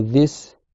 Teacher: c'est le bout de la langue qui vient se placer sous les dents du haut et l'air il passe entre la langue et les dents du haut donc faut vraiment absolument sortir le bout de la langue des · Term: DH